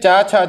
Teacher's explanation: संस्कृत में तो ये स्पर्शी व्यंजन है, संस्कृत में ये स्पर्शी व्यंजन है, परंतु हिंदी में इनको स्पर्श संघर्षी व्यंजन कहा जाता है, क्योंकि इनके उच्चारण करते समय जो हवा है वो घर्षण के साथ आती है